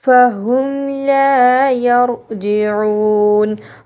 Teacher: لا یرجعون را کو پر موٹا کر کے پڑھا جائے گا را سے پہلے زبر یا پیش ہے تو را کو پر اور موٹا کر کے پڑھا